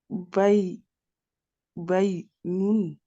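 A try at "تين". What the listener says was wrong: Alors là, du coup, c'est un tas plutôt.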